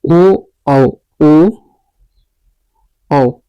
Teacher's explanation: ओ औ ओ औ ये कंठ ओष्ठ से निकलता है।